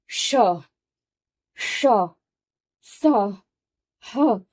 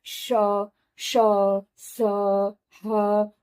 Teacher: ऊष्म वर्ण को बोलने के लिए हमें सांस को बाहर की तरफ फेंकना पड़ता है, तब ये अक्षर मुख से बाहर निकलते हैं।